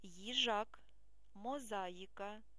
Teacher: буква ї позначає два звуки й І